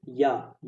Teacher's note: क्या होता है दोस्तों, आपका तालु ही होता है, या का भी या बोलो तो आपका जीभ हल्का सा तालु में टच होता है